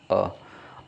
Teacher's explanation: जीवा के आधार पर दूसरा है मध्य स्वर, जिन स्वरों के उच्चारण में जीवा का मध्य भाग सक्रिय रहता है उसे मध्य स्वर कहते हैं,